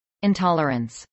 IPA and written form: ɪnˈtɑːlɚəns (intolerance)